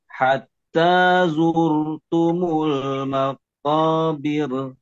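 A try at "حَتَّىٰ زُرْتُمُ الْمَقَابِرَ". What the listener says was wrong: Nah, sekarang tidak diayun ya. Jadi langsung nempel ke ro. Oke, birnya jangan diayun. Bir, tapi langsung bir.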